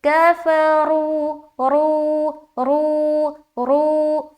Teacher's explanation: کاف فا کو جلد کر رہے، رو میں کھینچ رہے اور را کو موٹا بھی پڑھ رہے